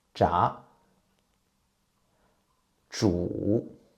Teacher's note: Zhi is an unaspirated consonant, and the vocal cords do not vibrate when you pronounce zhi. To make it zhi sound, you need to roll up the tip of your tongue against the hard palate, and then loosen it to let the air come out.